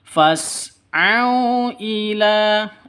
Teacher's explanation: au sifat lin lentur lemes tidak boleh disentak